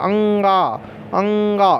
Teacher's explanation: जब अंगा बोलेंगे तो नाक का यूज होगा, अंगा, अंगा, तो ये नासिक के हो जाता है, नासिक के हो जाता है।